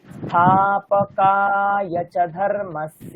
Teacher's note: দেখুন আমি স্থা থেকে অনেকক্ষণ টানছি